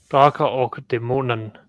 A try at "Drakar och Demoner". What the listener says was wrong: It's an R. at the end.